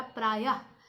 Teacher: य के बाद ह कहीं नहीं लिखा है, लेकिन ह का उच्चारण होता है। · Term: विसर्ग